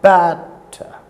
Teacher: The stress is on the first syllable. Batter. It's a trochee. · Batter is a foot consisting of 2 syllables, certainly, but it is not an iamb, because in this case it is the first syllable which is stressed and the second syllable is unstressed